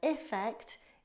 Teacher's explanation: effect is pronounced with an i sound like it.